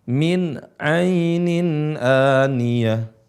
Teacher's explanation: Nah, padahal di sini ada nun sukun bertemu dengan ain, hukumnya izhar tanpa gunnah, tanpa mad.